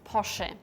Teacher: In German, it's Porsche. In German, it's very important that the E at the end is spoken.